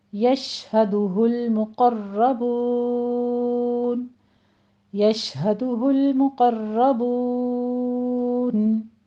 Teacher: آیت نمبر 21 دیکھیے، یشہدہ المقربون، یش شین پہ تفشی ہوگی، آواز پھیلے گی، اور آگے دال کے پر ضمہ، ہاں پہ ضمہ ہے، ہونٹ گول کیجئے۔ مقربون میں بھی میم کے پر ضمہ ہے، قوف کو پر پڑھتے ہوئے را بھی مفخم پڑھی جائے گی، تشدید والی اور فتحہ والی ہے۔